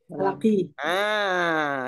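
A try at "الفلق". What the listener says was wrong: Itu tolong itu tanwinnya ada alif lam itu tanwinnya dihilangkan jadi kasroh saja. Ya, kasroh falaki, al-falaki. Jadi kasroh saja, nggak ada tanwinnya.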